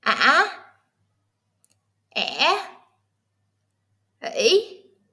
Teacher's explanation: High pitch. Squeeze your throat a little. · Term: Broken Tone